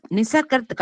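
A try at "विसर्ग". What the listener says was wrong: நிசர்கம் இல்ல, விசர்க்கம் அது. விசர்க்கம் ஸ்ரீ. ஆனா இதோட ப்ரொனவுன்சியேஷன் ஸ்ரீ எஸ்ஹெச் வரா மாதிரி இருக்கும்.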